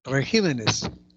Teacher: Regímenes. La tónica es ji